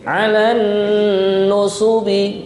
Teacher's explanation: Nah, di sini yang mendengung alan nusubi, nah, nun tasydid.